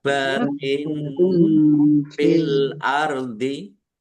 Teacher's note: Kasroh tanwin bertemu dengan huruf fa, bacaan ikhfa, dibaca samar-samar.